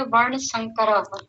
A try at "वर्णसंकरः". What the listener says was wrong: हाँ ठीक है, आपका उच्चारण ठीक है, पर मैं चाहूंगा कि आप फ्लो में बोला करें। जैसे अभी पीछे बाकी लोग बोल रहे थे ना, कुलक्षये प्रणश्यन्ति कुलधर्माः सनातनाः, यानी ये जो स्वर है ऐसे बोलने का प्रयास कीजिए।